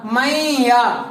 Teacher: देखिए नून को नहीं पढ़ रहे, क्यों, इसलिए कि अभी मैंने बताया, कायदा और रूल बताया है कि जब नून साकिन के बाद और तनवीन के बाद کوئی بھی شبد یرملون میں سے آ جائے اس وقت ہم اس نون ساکن کو نہیں پڑھتے ہیں. اس نون ساکن کی جگہ پر تنوین جیسی آواز ہمارے ناک میں رہتی ہے, یعنی غنہ جیسی آواز ناک میں رہتی ہے.